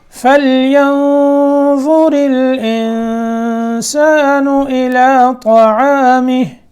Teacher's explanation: یہاں اخفا کرنا ہے فَلْيَنظُر کے نون میں